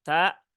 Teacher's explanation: tunaikan hames dari tak, jangan dihilangkan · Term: sifat hames